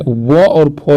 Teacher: अब देखिए, अब ये दंतोष्ठ जो है व और फ जो है, ये दंतोष्ठ यानी दांत और ओष्ठ से उच्चारण स्थान होता है इसका।